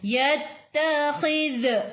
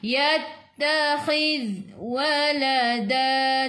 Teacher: Zadi tu hujung lidah keluar pada gigi depan. Tahan, jangan melantun.